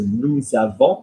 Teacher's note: Nous is naked, so nous avons, we've got the link, because we've got the vowel after the S, so therefore the S is pronounced